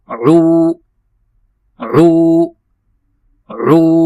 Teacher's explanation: عین کو ہم وسط حلق سے ادا کریں گے اور ہم پڑھیں گے عو عو عو، اور تھوڑا سا کھینچیں گے اس کو، کیونکہ عین کے بعد واو ہے تو اس کو دو حرکت کی مقدار کھینچنا ہے۔